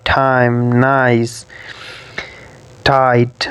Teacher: these diphthongs begin with an open vowel which is between front and back, and it's quite similar to cut sound of the word cut, bun.